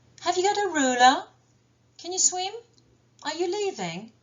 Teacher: L'intonation montante. Dans les yes-no questions.